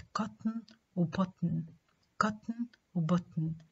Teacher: تا is nasally released when it's immediately followed by نا.